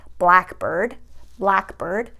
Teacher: So for example, if you have a word like blackbird, blackbird, you're going to stress the first part of the compound word. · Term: compound words